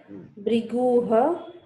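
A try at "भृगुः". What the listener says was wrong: No, not Briguha. Like Atrihi. Here it will be. Atrihi. It is not Atriha. Similarly, it is not Briguha. Brigu. Sarga takes the sound of hu. Preceding vowel, right?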